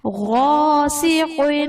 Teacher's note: غاسق، غین حرف مستعلیہ ہے، پر پڑھا جائے گا، الف سے پہلے زبر ہے، الف مدہ کا قاعدہ ہوگا، اس لیے اسے ایک الف یعنی دو حرکات کے برابر کھینچ کر پڑھیں گے، اور قاف حرف مستعلیہ ہے، اسے بھی ہم پر پڑھیں گے۔